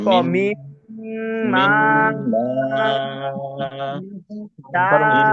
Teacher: মিম দুই ঠোঁট একবার লাগাই ফেলবে